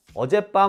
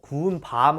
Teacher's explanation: 길이가 달라요. 어젯밤 할 때는 짧고 구운 밤 할 때는 길어요. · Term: 장단